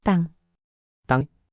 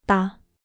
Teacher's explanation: The bass sound is tu. You make the same sound as tu, but with more tension in your throat.